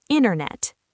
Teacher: Notice that I often drop the T after the N. Internet. This is a very common native habit.